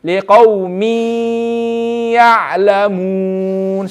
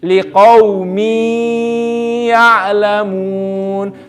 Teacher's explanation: We're not only reading these letters with a shadda, but we're reading them extra longer. We're reading them extra longer because of gunna.